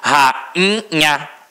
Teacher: Agora, rainha, rainha. O I ficou o quê? Nasalizado.